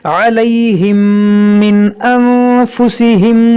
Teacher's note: मीम साकिन के बाद दूसरी मीम है, यहाँ पर क्या होगा इदगाम शफ़वी